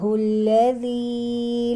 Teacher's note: لذی پہ یائے مدہ ہے، ایک الف کے برابر لمبا کریں گے